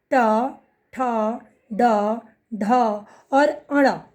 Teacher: ट वर्ग का जब हम उच्चारण करते हैं तो जीभ जो है मुंह के एकदम ऊपरी वाले हिस्से यानी मूर्धा में स्पर्श करती है। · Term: मूर्धन्य वर्ण